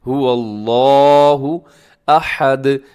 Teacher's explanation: اسے کھینچ کے پڑھنا ہے لفظ اللہ کو، کیونکہ اس کے اوپر کھڑا زبر ہے، اور اس کے علاوہ اس کو اپنے موٹا بھی پڑھنا ہے.